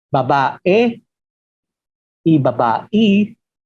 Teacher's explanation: El filipino precolonial no hacía diferencia entre la E y la I.